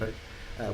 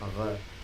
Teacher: the R in the accent that they would have had would have been trilled, a little bit like in Italian or in Spanish, like a R, whereas modern Jews tend to have a R, like in a French accent, if you will.